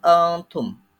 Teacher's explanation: Dan pada lafadz antum ada nun mati bertemu dengan ta, yaitu ikhfa.